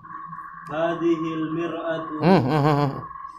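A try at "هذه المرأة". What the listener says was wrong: Mir'atu cermin. Mar'atu perempuan.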